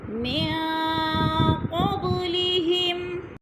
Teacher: قاب پہ قلقلہ ہو رہا ہے ہلا کر